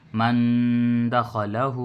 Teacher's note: حروف اخفا 15 ہیں، اس میں سے دال آیا تو نون کی آواز کو ناک میں چھپا کر پڑھ رہے ہیں، ایک الف کی برابر. من دخلہ، ایسے ہی پڑھیں گے اس کو.